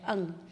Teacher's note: ये जो 5वां अक्षर है अंग, इसमें कंठ का भी उपयोग होता है और नाक का भी उपयोग होता है